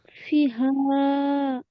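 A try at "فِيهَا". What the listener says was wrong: ফি, এখানে টান হবে।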